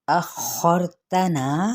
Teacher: अखरतना, यहाँ पे खौपुर और रा साकिन मा कबल ज़बर है, तब भी रा पुर पढ़ा जाता है